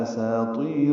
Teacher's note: حمزہ اقصی حلق سے سین صفیر سے صفیری آواز سے. سا الف مدہ ہے، 2 حرکات لمبا ہے.